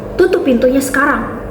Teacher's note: Diujarkan dengan intonasi menurun tajam di akhir. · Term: intonasi imperatif